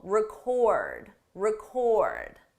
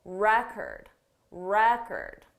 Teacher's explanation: the stress is on the second syllable, record, record. For the noun, the syllable stress is on the first syllable